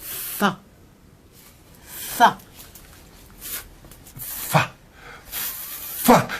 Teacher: Oh, les belles choses, da. L'F en appuyant les dents d'en haut sur la lèvre du dessous